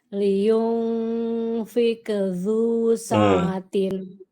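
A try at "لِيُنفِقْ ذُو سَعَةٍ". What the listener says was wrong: Ibu huruf qafnya liyunfiqo. Liyunfiqo. Fiqo.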